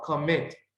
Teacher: es una palabra de 2 sílabas y tiene el estrés sobre la última sílaba